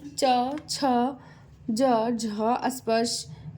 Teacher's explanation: जिन ध्वनियों का प्रारंभ तो स्पर्श से होता है, किंतु उन्मोचन धीरे धीरे होता है। ऐसे में हवा का कुछ देर में घर्षण करके निकलना होता है। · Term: स्पर्श संघर्षी व्यंजन